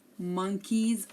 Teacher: also there's an s but we hear z